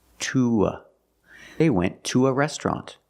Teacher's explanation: It's not stressed here, but we have to link it to the schwa sound. So we make the long oo.